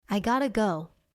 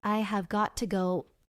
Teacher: In fast English, have got to becomes gotta.